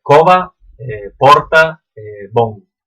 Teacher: Y todo lo que vexáis en asturiano con UE, ¿no? Puerta, bueno, cueva, pues nosotros vamos a decirlo con O aberta, ¿no?